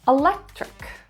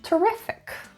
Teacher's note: the stress is in the second syllable